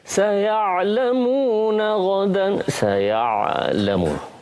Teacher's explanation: huruf ain ini tuan-tuan, sebagaimana kita maklum, dia berada ataupun makhrajnya di pertengahan halqun. Pertengahan halqun, satu.